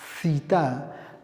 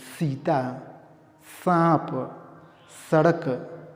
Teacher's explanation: जब जीभ को दांत से टकरा के उच्चारण करेंगे तो ये दंत्य स होगा और सही उच्चारण होगा।